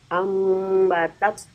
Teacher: Diganti huruf nun sukun tuh menjadi huruf mim.